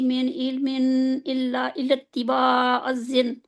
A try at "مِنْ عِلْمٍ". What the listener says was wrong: من من علم، عین کو نہیں ادا کرتے.